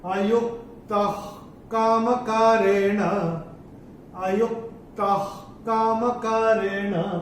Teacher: ये जो विसर्ग आ रहा है इसके बाद का अक्षर भी क ही है, तो ये इसका उच्चारण भी ह ही होगा।